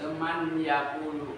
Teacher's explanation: Idgham itu masuk, nun mati masuk ke ya. Man jadi main.